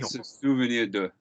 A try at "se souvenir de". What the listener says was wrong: More, more relaxed mouth. Se souvenir de. The first two vowels are not identical. Don't make it big. The first two vowels include the reflexive.